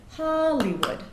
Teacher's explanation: there's three syllables there the stress is on the first syllable so we get Hollywood